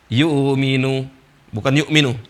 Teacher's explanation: alladzina yu'minuna bil ghaib dibaca yuminu, tidak dibaca hamzah.